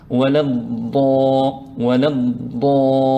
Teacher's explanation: on ne pose pas la langue ou le bout de la langue sur le bout des dents. La langue reste à l'intérieur de la bouche. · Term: la lettre ضاد